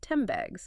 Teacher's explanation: The N sound in 10 is influenced by the B in bags. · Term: assimilation